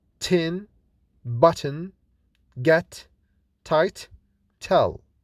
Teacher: T is unvoiced or voiceless and fortis, that is produced without vibration in the vocal cords with more force. · We are still talking about plosives, in which we stop the air completely using the tongue blade against the alveolar ridge. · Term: alveolar sound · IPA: /t/